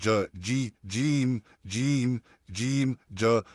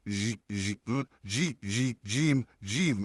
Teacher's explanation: इसको नोट करिए, आपने बिल्कुल भी जगह को आपके तालु में, हार्ड पैलेट में और जुबान में बिल्कुल भी फासला नहीं रखना है, थोड़ा सा भी गैप नहीं रखना है। अगर आप उस गैप को रखते हैं तो हवा बाहर निकलती है और आपकी आवाज़ कुछ इस तरीके से आएगी, जी जी जी जी जीम जीम, ऐसे नहीं होगा।